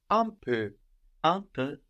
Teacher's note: We think the N again. We don't pronounce it. We just think about it. It's there.